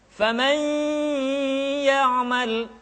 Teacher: Karena gunnah, tempat keluarnya adalah al-khayshum atau rongga hidung.